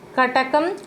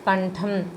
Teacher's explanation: ట అనున్నది అల్ప ప్రాణాక్షరం ఠ ఒత్తు ఠ అనేది మహాప్రాణాక్షరం